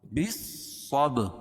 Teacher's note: با صاد زیر بس، صاد با زبر صب، بس صب، اور با پر قلقلہ کیونکہ با کے اوپر جزم ہے